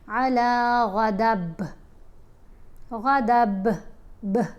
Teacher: با ساکن نہیں ہے، با کے نیچے 2 زیر ہیں، لیکن ہم وقف کر رہے ہیں نا، تو وقف کرنے کی صورت میں با ساکن پڑھ رہے ہیں، تو جب ساکن پڑھیں گے تو پھر اس کے اوپر کلکلا کریں گے. علی غضب، غضب، ب، یہ اس کو ہلا کر پڑھ رہے ہیں.